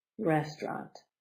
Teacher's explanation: Two syllables. Restaurant. Restaurant. The accent is the beginning.